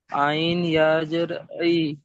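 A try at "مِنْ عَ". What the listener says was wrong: আইন ইয়া জের বলছেন, আইন ইয়া জের বলছেন, আইন ইয়া জাবার রয়েছে। অক্ষরের টানটা খেয়াল করেন, আইন ইয়া জাবার আই।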